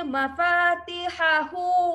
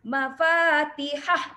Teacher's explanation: Mafatihahu, fa mad asli, hu juga dibaca dengan kadar 2 harakat ya, macam mad asli, tetapi hu kita tak panggil mad asli, hu kita panggil mad silah qasirah.